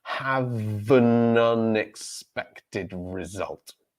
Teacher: So because we have un beginning with a vowel, so what happens there is we're taking the end of have, so the v consonant sound from the end of have. This then launches our next syllable, which becomes vun, ha-vun.